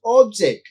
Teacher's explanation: if you stress the first syllable then that becomes object which is a noun